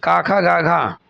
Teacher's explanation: जिनका उच्चारण कंठ के स्पर्श से होता है उसको कहते हैं का ख गाघ।